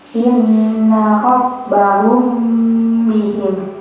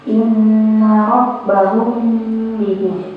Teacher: Jadi agak ada dengung-dengung di hidung gitu ya. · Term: ikhfa syafawi